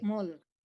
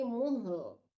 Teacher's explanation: Mul mangan jangan mul ya tapi muhl. Matikan h-nya dulu baru dimatikan lamnya ya. Jadi lamnya tetap kebaca ya. Jangan dihilangkan aja.